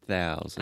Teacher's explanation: Really try to exaggerate the TH. I was hearing just say traditional T sound.